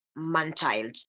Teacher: Here I wrote an example, but it happens when a vowel or a diphthong is preceded, followed, or surrounded, so preceded and followed by a nasal sound. The air for the production of the vowel sound will escape nasally due to the lowering of the velum in preparation for the production of the nasal sound. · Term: nasalization